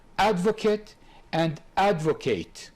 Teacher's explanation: since in the verb it should be on the second but in advocate the stress in both cases on the first